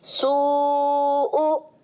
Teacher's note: واؤ مدہ کے بعد حمزہ اسی کلمے میں آ رہا ہے تو یہ بڑا والا مد مد متصل کہلائے گا اور 2 سے لے کر 5 الف کے برابر تک کھینچا جا سکتا ہے